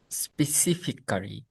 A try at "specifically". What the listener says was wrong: no, it's not Kali. It's like like if you imagine clean, clear, clee, So there's four syllables. One, two, three, four. One, two, three, four. One, two, three, four.